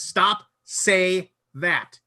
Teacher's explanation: he draws out the say yeah so it's it's a it's the same length as a